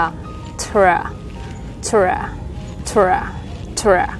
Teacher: Các bạn đọc âm t bật ra nè, t đúng không? Sau các bạn cong lưỡi lên đọc âm r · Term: âm tr